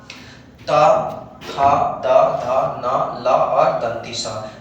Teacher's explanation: जब ये वर्णों को आप बोलिएगा तो आपका जीभ जो है वो दांतों को टच करेगा · दांत को दंत बोलते हैं, जो कि जब इन वर्णों का उच्चारण करेंगे तो हमेशा हमारा जीभ जो है वो दांतों को छूकर उच्चारित होने वाले वर्ण हैं